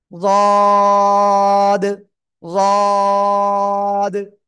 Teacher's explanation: জিহ্বার গোড়ার কিনারা উপরে মাড়ির দাঁতের গোড়ার সাথে সবাই একসাথে লাগাবো।